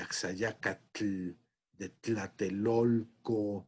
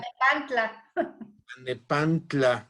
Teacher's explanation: el fonema tl, palatal africado